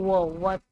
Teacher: दंत ओष्ठ से बोला जाता है व